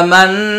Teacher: কুলু, হামজা খারা জবর আ, মিম নুন জবর মান, আমান, নুন আলিফ জবর না, আমান্না। মান ওয়াজিব গুন্না, না হচ্ছে 1 আলিফ টান